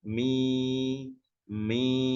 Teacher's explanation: suara memanjang bacaan Mad ini tadi Ya keluarnya atau makhrajnya itu dari aljauf rongga tenggorokan sampai ke rongga mulut kemudian keluar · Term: huruf mad